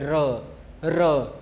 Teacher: जब हम जो है र का उच्चारण करते हैं तो हमारी जीभ जो है लुढ़कती है, यानी कंपन करती है। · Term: लुंठित व्यंजन